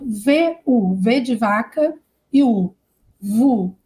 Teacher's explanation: É lábio, lábio, lábio inferior e dente, né?